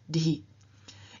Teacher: the H turns into the dental voiced aspirated stop, dhi. If we had a word that ended in a vela, the H would have voiced that vela, so for example from k to g, and itself would have changed into the vela voiced aspirated stop, ghi, and so on.